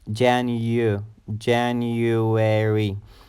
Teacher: the second syllable has a you sound even though there is no y in the word but it has a you sound Jan you January the third